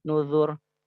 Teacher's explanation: ro sukun, sebelumnya dhammah, maka dibacanya tebal